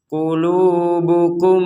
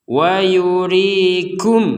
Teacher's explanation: Ada mim sukun bertemu mim, dan di sini diperkuat dengan tasydid, maka mim yang pertama dimasukkan kepada mim yang kedua, sehingga cara membacanya 100% dengung.